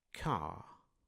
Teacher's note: em inglês britânico, como o R não é pronunciado, ficaria apenas o a alongado